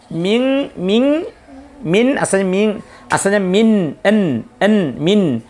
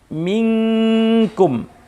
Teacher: Dan untuk menyamarkan suara nun sukun dan huruf atau tanwin, pada huruf di depannya tidak akan mungkin bisa terrealisasi kecuali harus dengan cara saat membaca huruf nun itu posisi lidah sudah ada pada huruf yang ada di depannya. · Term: ikhfa